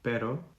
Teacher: words with one R have a very fast tap at the top of your mouth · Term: single R